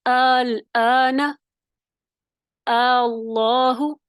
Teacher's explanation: دوسرے حمزے میں تسہیل ہوگی، یعنی وہ بھی نرمی سے پڑھا جائے گا